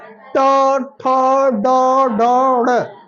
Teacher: आपका जीभ मुड़ रहा है, मुड़ के ऊपर छू रहा है। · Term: मूर्धा